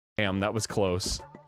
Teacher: he says the word close, but then I think for a comedic effect too, he broke it up into syllables and ended up saying like kilos